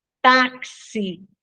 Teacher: na palavra táxi o X tem som de KS então uma letra Só que representa dois sons certo já nas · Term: dífono